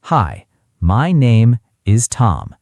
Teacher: each word flat, each word equal. This is understandable, but it doesn't sound natural.